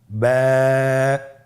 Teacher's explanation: এর মাখরাজ হলো আপনার 2 ঠোঁটের বিজা অংশ থেকে আপনি উচ্চারণ করবেন।